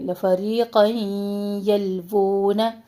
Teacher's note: تنوین کو ہم یا سے ملا رہے ہیں، مرج کر رہے ہیں یا میں. یہاں پہ ادغام مع غنہ کر رہے ہیں